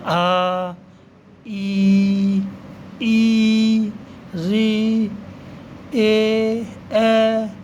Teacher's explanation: एक हो गया अव्रतमुखी। अव्रत मतलब जिसमें होठ गोल नहीं होते हैं